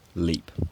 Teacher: In some accents like mine it's diphthongized slightly, broken into a gliding vowel.